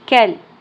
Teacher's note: کاف لام زبر کل. کاف باریک ہوگا، لام کے ساتھ جڑ جائے گا کیونکہ اوپر تشدید ہے.